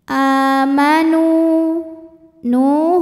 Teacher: panjang dua harakat saja amanu NU hukumnya adalah Mad Thobi'i dahiri sebab ada wau sukun didahului harakat damah maka Nun panjang dua harakat